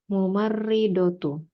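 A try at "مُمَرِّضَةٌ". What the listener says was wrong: Mumarridotun, tanwin.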